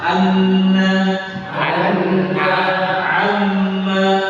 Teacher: kalau ada nun tasydid, mim tasydid itu 100% keluarnya dari rongga hidung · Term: guna